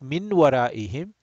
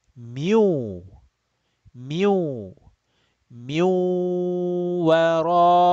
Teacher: With Gunna. Stretching the nasal sound. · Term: idgham bi gunna